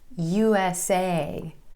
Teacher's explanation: See how my jaw drops for the letter name A sound that I'm emphasizing at the end of USA.